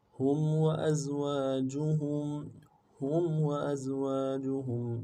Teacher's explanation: ہا کو میم کے ساتھ ملانا ہے، میم ساکنہ غنہ کریں گے